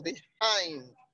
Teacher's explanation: behind has a stress on the second syllable